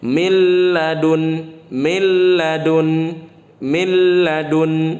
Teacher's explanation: Nun sukun bertemu dengan la. Nunnya tidak dibaca tapi lamnya dibaca double, ya, jadi tasydid lamnya. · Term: idgham bila gunnah